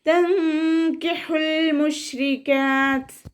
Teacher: തൻകിഹുൽ മുശ്രികാത്ത്. ഇവിടെ ഹ സൗണ്ടിനെ വ്യക്തമാക്കി കൊടുക്കുക. തൊണ്ടയുടെ മധ്യഭാഗത്തു നിന്ന് കൊണ്ടുവരിക.